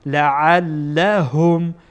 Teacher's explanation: عین با لام، عین هم از وسط حلقه ادا میشه. لعلهم، هم ها از انتهای حلقه ادا میشه